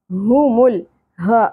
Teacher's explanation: اقصی حلق سے ادا ہوگا گہرائی کے ساتھ